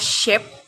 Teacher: The sound articulated when the blade of the tongue approaches or touches the alveolar ridge, and the main body of the tongue approach the hard palate in the mouth. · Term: palato-alveolar